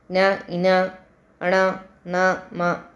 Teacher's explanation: ముక్కు సాయంతో పలికే అక్షరాలు న ఇన ణ న మ అనునాసికాలు అని పిలుస్తారు